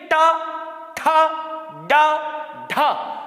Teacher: जीभ कहां पर टच हो रही है? ऊपर के पिछले भाग में हो रही कि नहीं हो रही? मूर्धा पे हो रही है · मूर्धा पे जवान टच होके जाती है। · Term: मूर्धन्य व्यंजन